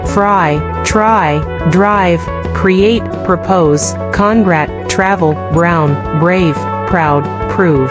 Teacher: comme s'il y avait, également, une lettre W derrière la lettre R, mais celle-ci est prononcée comme la manière décrite plus haut, c'est-à-dire la lettre R en anglais américain.